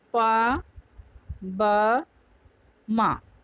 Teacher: ओष्ठ, प, ब, म ये अल्प प्राण होंगे